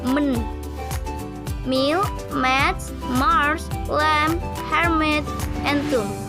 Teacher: the mouth passage is completely blocked by closing the lips, but the soft-palate is lower so that the air can pass through the nose. The tongue is held in natural position. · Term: Bilabial nasal